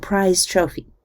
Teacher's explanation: in prize trophy, the vocal cords cut out a bit early in preparation for the voiceless T sound. We indicate this partial devoicing by a little circle under the symbol for the Z sound.